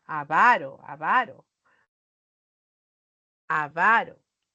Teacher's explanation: A veces lo pronunciamos como esdrújula pero es grave